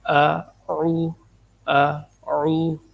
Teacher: تلفظ کو اگر ہم دیکھیں، تلفظ کی ادائیگی جو ہے اس کو اگر ہم دیکھیں تو سب سے پہلے آغاز میں حمزہ ہے جس کو بالکل باریک پڑھا جاتا ہے، اور اس کے بعد عین ہے، اور عین کی آواز گلے سے موٹی آواز نکالی جاتی ہے